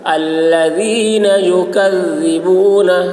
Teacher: ذال کی آواز باریک ہوگی